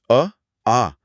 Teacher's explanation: आ का उच्चारण स्थल है? उत्तर है कंठ यानी गला।